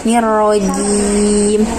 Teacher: jim itu juga makhrajnya di tengah lidah ke langit-langit dan menempelnya kuat, sempurna